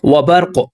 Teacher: اور آپ دوستوں کو پتہ ہے کہ جو قاف ہے حروف قلقلہ میں سے ہے، 5 حروف قلقلہ ہیں، قاف طا با جیم تا، جب یہ حروف ساکن ہوتے ہیں تو وہاں پر ہم قلقلہ کرتے ہیں، تو یہاں پر قلقلہ کہتے ہیں وائبریٹ ہونا، آواز کا دوبارہ لوٹنا، وبرق آپ ساکن کریں گے تو قلقلہ بھی ہوگا، اور یہ وقف جائز کی علامت ہے، یہاں پر رکنا بہتر ہے، ملا کر پڑھنا جائز ہے، تو یہاں پر ہم رک گئے۔